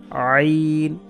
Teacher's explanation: এটার নাম হচ্ছে আইন, গলার মাঝখান থেকে, কণ্ঠনালীর মাঝখান থেকে, যেটাকে মাখরাজের পরিভাষায় বলা হয়, আরবিতে লেখা যে হলকের মধ্যখান থেকে।